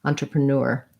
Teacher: basically these three unstressed are all schwas they all sound like uh